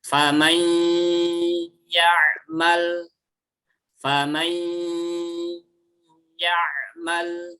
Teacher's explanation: rahang bawahnya tetap turun ke bawah, tapi suaranya diarahkan ke hidung. Nanti dia akan sempurna gunnahnya. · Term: idgham bi gunnah